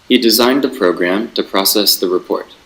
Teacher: the high pitch, and then it goes down in the last stress syllable